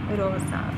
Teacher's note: slight narrowing slight narrowing and not enough to cause friction